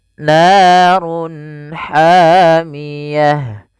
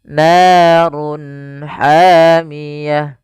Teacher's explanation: Run ketemu ha jelas. Kita namakan dengan izhar halqi. Suaranya harus dibaca dengan jelas.